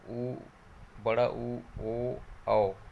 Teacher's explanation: वृत्त जो मुखी स्वर होता है, इसमें जो होंठ है वो क्या होता है? गोल हो जाता है इसको बोलने में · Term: वृत्तमुखी स्वर